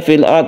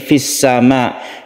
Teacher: Idhar artinya jelas, maka di sini harus diperjelas suara lamnya ini, maksudnya sukun lamnya ini harus terbaca. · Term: idhar qamariyah